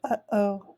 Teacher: Some things to notice is that between A and B is this glottal stop that's an actual letter, because it's not necessarily that we're producing a sound, but we are causing the wind through our vocal systems to stop and be cut off. So we get that a lot when we say the word uh-oh.